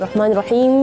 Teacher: agak panjang sedikit ketika melafalkan huruf mim Tapi jangan sampai berlebihan juga